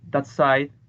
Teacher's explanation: in that side the plosive ta becomes fricative